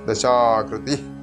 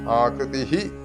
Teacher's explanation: വിസർഗ്ഗമാണ് വിസർഗം രണ്ടു തരത്തിൽ ഉച്ചരിക്കാറുണ്ട് ഒന്ന് ഞാൻ ഉച്ചരിച്ചതുപോലെ ദശാകൃതി എന്ന് വിട്ടലായിട്ട് വിസർഗ്ഗം എന്നാൽ വിട്ടലാണ് അതല്ലാതെ ആകൃതിഹി എന്നും ഉച്ചരിക്കാം